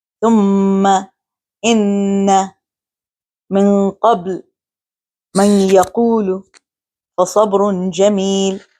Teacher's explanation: Mim and noon, when doubled with tashdid or shadda, are pronounced in the nasal cavity. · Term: ghunna